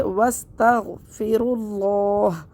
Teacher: را کو لام سے ملا دیں گے ، اللہ، لفظ اللہ کے لام سے ملا دیں گے، اور · گے، اللہ، لفظ اللہ کے لام سے ملا دیں گے، اور لام را کو موٹا بھی پڑھیں گے کیونکہ را کے اوپر پیش ہے